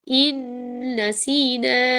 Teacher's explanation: یہاں پر نون پر شدہ میں غنہ کامل کرنا ہے